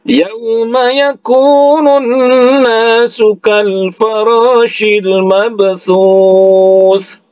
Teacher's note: Kemudian thu itu 2 harakat karena matobi'i waw di ujungnya. Nah, oleh karena ini di akhir ayat, maka dihukumkan di sini adalah mad arid disukun. Ya, panjangnya bisa 2 harakat, bisa 4 harakat ataupun 6 harakat.